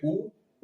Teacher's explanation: उ का उच्चारण करते हैं तो ओठ वृत्त के समान हो जाता है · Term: वृत्ताकार स्वर